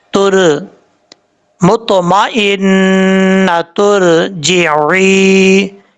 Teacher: را ساکن سے پہلے پیش ہوگا تو را کو پر پڑھا جائے گا